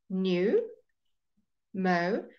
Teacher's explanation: it's like you saying that like there's a w at the end of the oh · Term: O sound